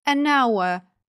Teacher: варіант a hand А тепер погляньте на слово а а тобто літера H тут не читається і Слово починається вже з голосного звуку а а Уявіть що я поставлю сюди а тоді в мене